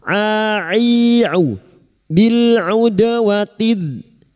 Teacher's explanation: Bil udwatid, huruf ain huruf ain jangan tertukar hamzah. Huruf ain wastul halqi atau tengah tenggorokan.